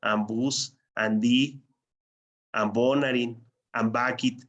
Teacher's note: En lugar de ser una P, suena como B. En lugar de ser una T, suena como D. Y en lugar de ser una K, suena como G.